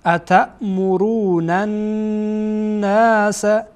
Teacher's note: این نون با نون دیگه وصل میشه